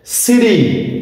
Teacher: between two vowels sounds like soft, light or short D. দুটো ভাওয়েলের মাঝে যখন টি বসবে তখন এর ধ্বনি বা আওয়াজটা হবে নরম একটু ডি, ড, বাংলা বর্ণ ড এর মতো, তবে গাঢ় নয়, নরম একটু ড, লাইট হালকা একটু ড, শর্ট সংক্ষিপ্ত একটু ড এর মতো, একদম গাঢ় ডি বা ড এর মতো নয়। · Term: flap T